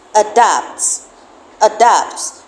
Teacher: Remember, we said that the schwa sound is a very weak, unaccented vowel sound that you will find in an unstressed syllable. The word adapt has the first syllable as an unstressed syllable.